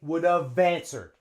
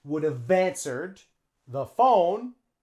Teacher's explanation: the main verb starts with a vowel so we say would have answered and we link them